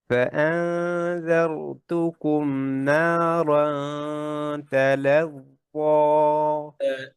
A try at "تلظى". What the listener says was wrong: তালাজ্জ য দুটেই মোটা এমন না যে প্রথমটা পাতলা পরেরটা মোটা না তালাজ্জ তালাজ্জ